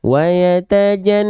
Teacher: Nah, maka ketika kita lafalkan wayatajan, nah itu an-nya tuh ditahan dulu, dengungnya tadi yang masuk ke dalam rongga hidung tadi tahan 2 harokat